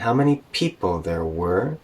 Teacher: we're going up again with were to show we're not done talking yet